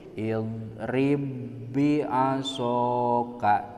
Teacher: diasupkeun ba nu kahiji kana ba anu kadua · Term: idgamna